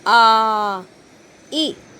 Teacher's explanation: इनके उच्चारण में ह्रस्व स्वर के से दुगना समय लगता है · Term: दीर्घ स्वर